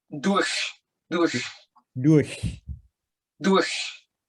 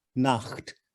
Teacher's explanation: durch is forward over the tongue. Nacht is back.